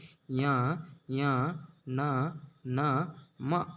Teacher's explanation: ನಾಸಿಕ ಸಹಾಯದಿಂದ ಹುಟ್ಟುವ ಅಕ್ಷರಗಳನ್ನ ಅನುನಾಸಿಕ ಅಕ್ಷರಗಳು ಅಂತ ಕರೀತಾರೆ